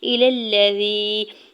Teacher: الذی، حمزہ کی زیر کو بغیر کھینچے ہوئے ادا کرنا ہے اور لام کے زبر کو لام شدت کے ساتھ ملاتے ہوئے پڑھیں گے۔ یا ساکن سے پہلے زال کے نیچے زیر ہے یا مدہ ہو رہا ہے، دو حرکت کھینچ کے ادا کریں گے۔